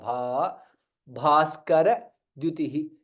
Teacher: भा is महाप्राण and दीर्घ